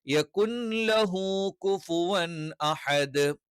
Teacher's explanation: അപ്പൊ നൂന് വ്യക്തമായി പറയാൻ പാടില്ല, പക്ഷെ അവിടെ നൂൻ ഉണ്ട് എന്ന് മനസ്സിലാവുകയും വേണം. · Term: ഇദ്ഗാമുൻ ബിലാ ഗുന്ന